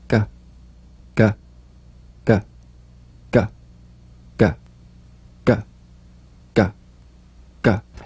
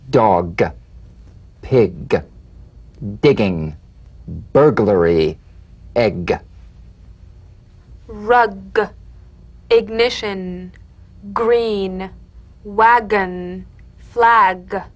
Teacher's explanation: a crisp tap and a voiced pulsation of the back of the tongue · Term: drum beat G